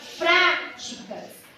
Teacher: quando você fala práticas o pra é a sílaba mais forte